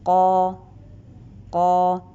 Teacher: the back part of the tongue is raised to the upside · The sound we are producing the qaf is hitting the upper roof.